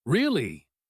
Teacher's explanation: Said with a slightly skeptical, slow tone, it can signal disbelief, like you think something is not quite right. really said quickly with a high sharp rise in pitch means genuine surprise and curiosity